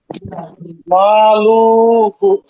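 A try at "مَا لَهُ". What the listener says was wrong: এই যে লু টান হবে না, লুতে টান হওয়ার কোনো নিয়ম নাই এখানে। এক পেশ হলো হরকত। মা লু হু। মাতে টান হবে আর হুতে টান হবে, মা লু হু। মা লু হু। থামা যাবে না, টান দিয়ে যেতে হবে। মা, একালিপ টান তো।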